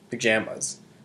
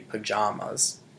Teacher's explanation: pajamas with a taller, more high A in the palate